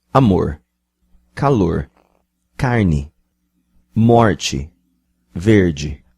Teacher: the sao paulo city flap becomes the american r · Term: voice alveolar approximant